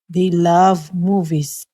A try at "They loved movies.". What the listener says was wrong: Okay, again, that TH, very important. Okay, it should be they.